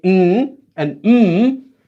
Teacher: they're made with your nose so you say m and M notice how your your nose vibrates when you say them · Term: nasal consonants